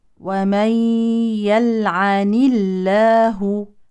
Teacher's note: لام اسم الجلاله ترقق لانها مسبوقه بكسر